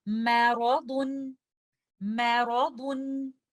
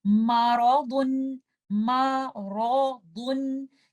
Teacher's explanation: لیکن لیٹر میم ایک light letter ہے تو ہم اس کو اس طرح سے پڑھیں گے میرضن، میرضن۔ آپ نے لیٹر میم کو ہیوی نہیں کرنا، آپ نے اس کو اس طرح سے نہیں پڑھنا مارضن، مارضن، کیونکہ اس طرح اگر میں پڑھوں گی تو میں نے تو میم کو بھی ہیوی کر دیا۔